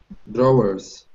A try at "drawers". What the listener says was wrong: Yeah, but you can say it with one syllable. Drawers. Drawers. That's it.